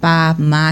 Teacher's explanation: ela já vai começando com pá, má, que são bilabiais, que são o movimento aqui, ó, superficial aqui da boca.